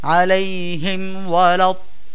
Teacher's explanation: আলাইহিম ওয়ালাদ-দাল্লিন, হিম মিমে সাকিনের পরে ওয়াও আসছে, আমরা এখানে গুন্নাহ ছাড়া স্পষ্ট করে উচ্চারণ করব। আলাইহিম ওয়ালাদ-দাল্লিন, লাহুম ফিহা, লাহুম ফিহা, মিমে সাকিনের পরে ফা আসছে, তো একে ইজহারে খাস বলে।